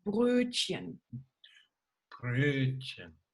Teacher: Now look at the little O with the little dots on top. It's actually an Ö. You have to kiss for it.